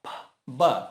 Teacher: Por exemplo, a letra P, o som é de P, sem voz. Se eu adiciono voz, B. Então aqui eu tenho um par, P, B.